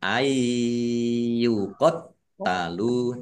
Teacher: Ayyuqat talu nun sukun bertemu dengan huruf ya bacaan idgham bi gunnah masuk dengan mendengung ya mendengung ya ditahan biar tampak dengungannya ayyuqat talu taknya dibaca double ada tasdidnya ditekan biar tampak doublenya